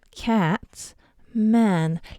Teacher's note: En phonétique, ça s'écrit un petit peu un a et un e collé parce que tu vas le prononcer un petit peu en mélangeant les deux. Comme dans écoute bien le mot, cat man.